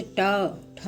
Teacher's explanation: टा वर्ग के वर्णों को बोलने में जीभ मूर्धा को छूती है।